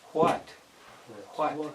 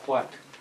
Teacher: you should feel a little puff of air if you're saying it correctly